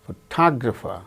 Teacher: In the case of the word photograph, the first syllable gains stress. In the case of the second word, photographer, second syllable gains stress.